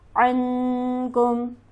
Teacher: عن میں نون ہمارے پاس ساکن ہے، اس کے بعد حرف ہلکی موجود نہیں، تو لہٰذا یہاں پر ہم غنہ کریں گے